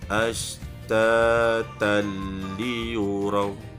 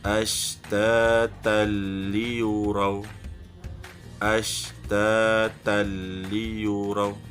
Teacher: Saya idghamkan bunyi nun mati pada tanwin ke dalam huruf lam. Jadi bunyi lam lah. Tidak ada bunyi nun lagi. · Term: idgham bila gunnah